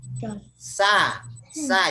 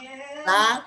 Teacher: huruf sin ini, nah itu adanya di ujung lidah bertemu gigi bagian dalam, gigi seri bagian dalam, bagian di bawah. Nah, gigi bagian di bawah lah, gigi bawah.